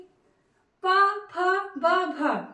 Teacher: प फ ब भ जब भी आप इनका उच्चारण करेंगे दोनों होट आपस में मिलेंगे प फ ब भव यानी कि इनका उच्चारण स्थान पोस्ट है